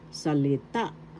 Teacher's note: The accent is in the third syllable